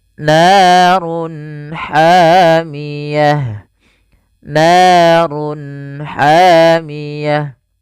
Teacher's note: Run ketemu ha, jelas kita namakan dengan izhar halqi. Suaranya harus dibaca dengan jelas.